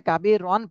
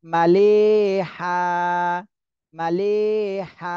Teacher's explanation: ওয়াকফের সময় যদি দুই জবর থাকে তাহলে এক জবর বাদ দিয়ে এক আলিফ টেনে পড়তে হয়